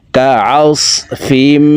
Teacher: আইন হরফকে হলকের মধ্যখান থেকে উচ্চারণ করব, কারণ আইনের মাখরাজ হলকের মধ্যখান থেকে হবে।